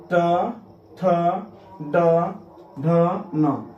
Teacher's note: इनके उच्चारण करने में आपका जीभ सीधा मूर्धा को टच करती है। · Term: मूर्धन्य वर्ण